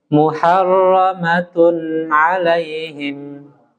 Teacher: tanwin itu kalau dia izhar jelas itu harus jelas berbunyi An In Un tanpa kita percepat ketuk nya